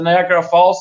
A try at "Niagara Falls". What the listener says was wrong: You say Niagara Falls like you say omelet. You have more syllables in your words.